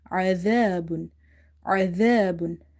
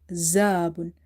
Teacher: Zal is from the tip of the tongue